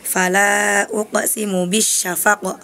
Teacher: banyak qalqalah yang harusnya hanya dipantulkan di akhir